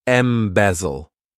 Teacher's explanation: this verb has three syllables and the stress is on that second syllable. · this verb has 3 syllables, and the stress is on that second syllable. Embezzle. What it means is to take money or maybe even property, but most of the time we're talking about money, and to do it in a fraudulent way.